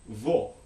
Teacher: you can have back rounded o, as in vo, which is again, the word for veal